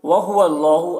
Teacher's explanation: اللہ کے لام کو پر پڑھیں گے، کھڑا زبر ہے، ایک الف کے برابر کھینچیں گے۔